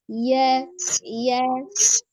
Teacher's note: Dilihat dari jahar atau hams ya, jelas atau samar, maka huruf iya termasuk huruf yang bersifat al-jahru, jahar ya, jelas. Nafasnya tertahan. Jadi tidak ada hembusan nafas yang mengalir ketika mengucapkan huruf iya, berbeda tadi dengan huruf H ya.